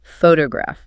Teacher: When we say photograph, the rhythmic punch is on the very first syllable · Because that first O carries the primary stress, it is allowed to maintain its full, clear dictionary sound